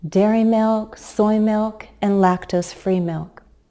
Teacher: my voice went up a little on each item but to give a sense of finality to the list my voice went down I used falling intonation on the last item so the pattern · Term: intonation used for lists